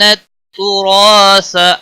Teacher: را کو زبر کی وجہ سے موٹا پڑھیں گے